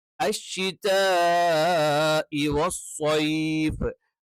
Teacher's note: നാവിന്റെ മധ്യഭാഗം അഥവാ നാവിന്റെ സെന്റർ മേലെ അണ്ണാക്കിൽ ടച്ച് ചെയ്തുകൊണ്ടാണ് ഷ എന്നുള്ള ഉച്ചാരണം പറയേണ്ടത്